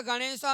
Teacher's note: अ का उच्चारण स्थान कंठ है और ई का उच्चारण स्थान तालु है